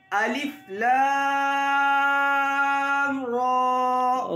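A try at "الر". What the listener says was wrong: را میں ہونٹ گولنا ہو.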